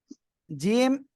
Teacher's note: জিহ্বার মাঝখান তার বরাবর উপরে তালুর সঙ্গে লাগিয়ে উচ্চারণ হবে শক্ত আওয়াজে তাই না তিন আলিফ টান হবে জিম অক্ষরে মনে রাখবেন এটা